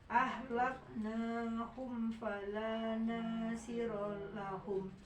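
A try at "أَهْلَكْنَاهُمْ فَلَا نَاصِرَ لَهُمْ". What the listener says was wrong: Ya, yang pendek jadi panjangin ya. Ahlaknahum fala nasira lahum. Nah di situ rusuh.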